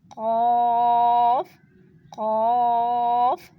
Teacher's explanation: تو یہ اقصی لسان زبان کی جڑ جب اٹھے گی، اس نرم تالو کو ٹچ کرے گی تو قاف ادا ہوگا۔ قاف قاف، خوب موٹی آواز میں پڑھنا ہے کیونکہ یہ پر لیٹر ہے